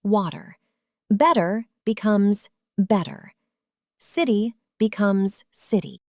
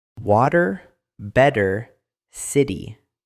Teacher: The flap T. If a T is between two vowels, it turns into a fast D. So water becomes water.